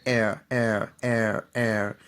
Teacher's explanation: The extreme left, you have e, e, so there are two short sounds, e and e. When you put them together, you get air